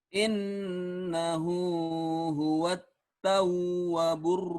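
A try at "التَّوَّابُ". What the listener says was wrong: tawwa panjang. Tawwa.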